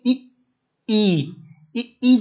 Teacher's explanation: ई जब भी बोलते हैं तो तालु, आपकी जीभ तालु पे जाती है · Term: तालव्य